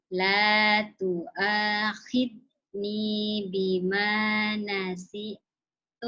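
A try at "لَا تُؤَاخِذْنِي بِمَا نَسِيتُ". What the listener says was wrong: Bima. Jangan dipotong. Bima nasitu. Sinya panjang, Matobi'i.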